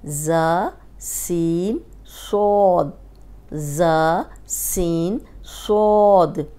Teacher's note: یہ 3 جو ہیں یہ سیٹی والے ہیں، اس میں صاد موٹا ہے